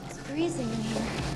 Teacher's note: she spoke above her vocal cords and used a kind of breathy speech to create the sense that her voice was bodiless. · the whining tone of her voice accompanied by hesitation and silences